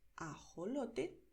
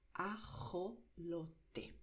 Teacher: Puedes pronunciar ajolote, como acabo de hacer, pronunciando de manera suave con la garganta, igual que cuando en inglés dices hello. Es un sonido suave de garganta, pero hay regiones donde la gente pronuncia con más fuerza.